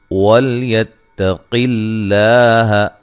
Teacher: قاف کو موٹا ادا کرنا ہے، اور لام کو لفظ اللہ کی لام کو باریک پڑھنا ہے، اس سے پہلے زیر ہے.